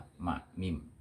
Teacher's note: Dan ini semua diucapkan melalui 2 bibir. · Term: syafatain